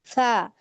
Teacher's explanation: नीचे वाला जो ऊपर अंदर बाहर से ना लीजिए, मैं यहाँ पे फिर से आपको दिखाती हूँ, ये देखें, यहाँ पे अंदर की तरफ लग रहे हैं ना दांतों के किनारे, दो दांतों के किनारे अंदर की तरफ आपके टच होंगे तो फा अदा हो जाएगा सही